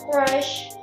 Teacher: It consists of three consonant sounds, namely voiceless velar stop, voiced alveolar approximant, voiceless post-alveolar fricative, and one vowel sound, namely low front unrounded vowel.